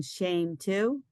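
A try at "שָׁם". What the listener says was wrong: No, it isn't. What's the new vowel we learned today? The little T is a ah.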